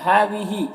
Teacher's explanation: ہذہ ہاں میں کھڑا زبر ہے، اسے ایک الف کے برابر کھینچیں گے